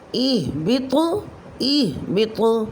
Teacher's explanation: طا حروف قلقلہ میں سے ساکن حالت میں کلمے کے آخر میں آ رہا ہے وقف کی صورت میں تو یہاں قلقلہ کبریٰ ہوگا